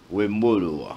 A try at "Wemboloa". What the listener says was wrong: Non, Wemboloa. y a des modulations qu'il faut respecter. Vous montez, vous descendez, vous montez, vous désirez Wemboloa.